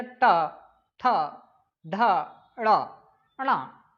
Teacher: यानी जो आपकी जो जीभ है वो ऊपर वाले मूर्धन में स्थित होती है, यानी आपके दोनों जोबड़े के ऊपर टिकती है, उसे हम क्या कहते हैं, मूर्धन वाले।